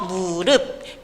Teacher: 음절의 끝소리 규칙에 의해서 무릎 피읍이 비읍으로 바뀌어서 발음되는 현상이 나타납니다